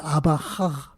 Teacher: Pues bien, por un proceso de fonética, hay una palabra, la palabra final de Amahaj, que es una GH, que es un sonido uvular, fricativo, estoy hablando un poco en plan técnico, sonoro, se transformó en uvular, fricativo, sordo.